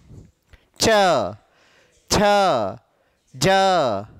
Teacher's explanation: आपकी जीभ ऊपर जा रही है, ऊपर वाले जबड़े को छू कर आ रही है। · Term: तालु